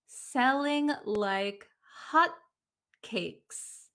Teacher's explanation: So in American English, the T is very mysterious. This T is gone at the end of hot.